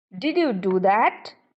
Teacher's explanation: you were very much surprised so you can use rising tone to express doubt you can use rising tone